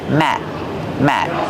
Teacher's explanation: We don't release the sound.